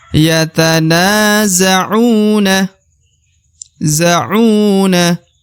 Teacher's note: u dibaca Dua harakat ya karena terdapat wau sukun di depan huruf u